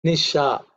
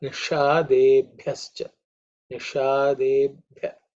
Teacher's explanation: The sha is again tongue raised up.